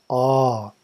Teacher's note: the first syllable is a pronounced as English word ah but prolonged